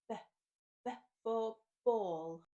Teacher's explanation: This is a short, quick sound, B. You can't hold it for long, B. The next letter is C, and the hard sound for this letter is K.